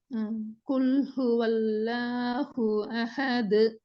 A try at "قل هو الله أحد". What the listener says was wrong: வரல, ஏட சவுண்ட் வரல. சவுண்ட் மிக தெளிவா வரணும் பாருங்க. قل هو الله أحد. அஹது அந்த ஏட உச்சரிப்படுக்கும்.